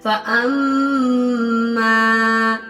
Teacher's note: میم پہ غنہ اور الف مدہ